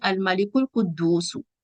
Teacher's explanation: عربی الفاظ کے شروع میں بعض اوقات الف ہوتا ہے، اگر اس سے پہلے کوئی لفظ آ جائے تو یہ الف ساکت ہو جاتا ہے، یعنی پڑھنے میں نہیں آتا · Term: حمزۃ الوصل